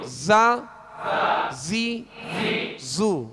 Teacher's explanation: زا زی زو، یعنی اس میں زیادہ جو ہے وہ زا زی، اس قدر جو ہے وہ اس کے اندر سختی کہ جس میں تکلف پیدا ہو، یہ درست نہیں ہے۔ بس آواز جو ہے اس کی سخت ہو، سیٹی جیسی آواز نکلے اور جو ہے آسانی کے ساتھ نکلے